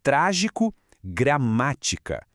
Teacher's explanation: A sílaba forte aqui é a antepenúltima, sempre contando de trás pra frente. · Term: propoxítonas